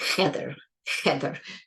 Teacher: really I I don't feel any tightening it's just the air there is air going through the throat for that H